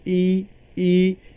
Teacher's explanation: आप इसे प्रोनाउंस करके देखिए, ई यानी हमारे हल्क से या जो हवा निकल रही है वो उसका जो टच हो रहा है या जो हवा जो जाके टकरा रही है वो तालु को टकरा रही है, इसीलिए इसे तालव्य स्वर कहा गया है।